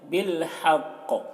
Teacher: قاف میں قلقلہ کریں گے، کیونکہ قاف حروف قلقلہ میں سے ہے ، تو یہاں پر وقف کی صورت میں یہ جزم سے